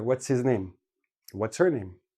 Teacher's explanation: we keep the ts i make it we drop the h and we put it all together · h's are quite often dropped because h is a very soft sound it gets lost in the flow of the speech